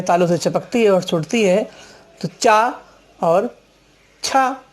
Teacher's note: जीभ है तालु से चपकती है और छूटती है, तो चा और छा निकलता है।